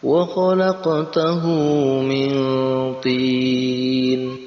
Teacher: Ada eng antara nun mati dan ta, itu dikasih huruf atau dikasih tambahan eng karena untuk menyamarkan. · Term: ikhfa